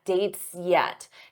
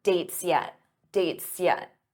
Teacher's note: notice how that s Blends into the Y for yet